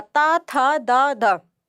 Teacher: आपकी जो जिह्वा है वो दांतों को स्पर्श कर रही है। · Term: दंतीय व्यंजन